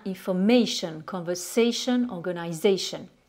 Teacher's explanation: Et vous constatez qu'en termes d'accentuation on va donc porter l'accent sur l'avant-dernière syllabe, donc sur le A.